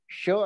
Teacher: तालव्य म्हणजे टाळूचा उपयोग होतो तर टाळूचा उपयोग करताना श म्हणतो आपण